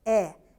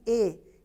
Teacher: ela é uma não se lá botonico a gente percebe que temos um som de uma vogal aberta né o som é aberto quando nós falamos é é diferente de e que o som é mais fechado